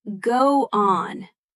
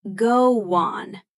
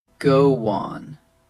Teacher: It often comes out as go on, with a little W bridging the two words. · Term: soft W sound